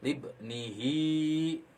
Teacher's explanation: Nah, kalau bertemu dengan huruf h besar dan itu biasanya ditandai dengan bulat ya, bulat bentuknya dan di akhir kata hi, maka itu dibacanya 2 harakat. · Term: mad silah qasirah